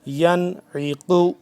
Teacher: اب یہ ہے نون ساکن ہے، اب اس پہ ہم غنہ نہیں کر رہے